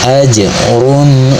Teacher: jim sukun dibaca dengan qalqalah atau dipantulkan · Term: qalqalah sugrah